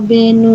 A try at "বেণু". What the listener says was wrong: না ম্যাডাম, বে ওটা দীর্ঘ আছে, তাহলে এখানটাকে টানতে হবে। জয়া বেনু, জয়া বে, জয়া বেনু নিনাদক, দীর্ঘ।